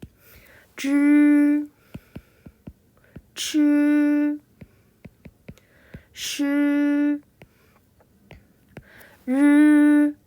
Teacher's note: 혀를 말아 올리듯 혀끝을 위쪽으로 오물리면서 입천장에 붙였다 떼거나 가까이 대고 발음해요